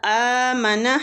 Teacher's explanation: آمنا حمزہ کو کھینچیں گے کھڑی زبر کی وجہ سے